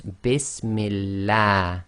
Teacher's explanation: And the reason for that is the meme is carrying a kasra. Kasra before the name of Allah makes the Lam of Allah go tarqiq, i.e. light.